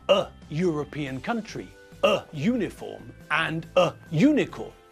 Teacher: the way we pronounce the U make it sound like there is a y sound in the front of the word